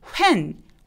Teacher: 이렇게 h를 무시하고 W 발음만 내죠